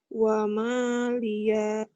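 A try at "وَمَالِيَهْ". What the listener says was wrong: Pendek. Wa maliya.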